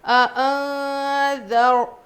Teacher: نون کی آواز کو ناک میں چھپا کر پڑھیں گے. اس کو اخفا کا قاعدہ کہتے ہیں، یہ اخفا کا قاعدہ ہے، اخفا کرنا کہتے ہیں.